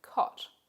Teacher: However, the symbol used for Australian English for this sound is usually this one we've got here on the screen. Australian English also has a low, back-rounded vowel, the vowel in cot.